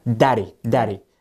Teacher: when you say daddy it's it's a very swift it's like just a tap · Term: flap t